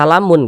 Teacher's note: Bacalah dengan samar-samar. Kemudian, pengucapannya juga harus dinasalisasi. Ya, dengan ghunnah. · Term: ikhfa